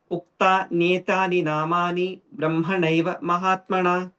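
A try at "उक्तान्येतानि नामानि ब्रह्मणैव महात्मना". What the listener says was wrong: Don't have a gap between uktan neta. It's like this, okay? Navamam siddhida prokta Navadurga prakirtita uktan netani namani brahmanaiva mahatmana. It's not uktan etyani. It's not etyani. It's nyetani.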